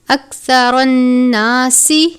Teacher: اکثر الناس سا کو سین کی طرح نہیں پڑھنا، یعنی آپ نے اکثرن نہیں پڑھنا، سا کو نرمی سے پڑھنا ہے، را کے اوپر زبر ہے، را کو پر پڑھتے ہیں